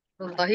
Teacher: Rullahi adalah lafaz Allah dibaca tebal